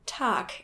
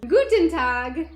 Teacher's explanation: Another problem really similar to this is that German words ending with G are normally pronounced as if there was a K, making it Tag instead of Tag.